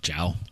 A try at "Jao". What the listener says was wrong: Jao? But Jao is there's no J noise in Spanish.